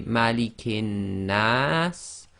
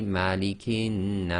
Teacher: End of sentence, we pronounce the Sin as if it's sakin. So effectively we've got a long vowel with a sakin letter. So this can be 2, 4 or 6 long.